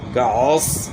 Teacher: عین کی آواز گلے کے درمیان سے، صاد یعنی موٹے حروف میں سے ہے تو صاد کو آپ نے موٹا کرنا ہے۔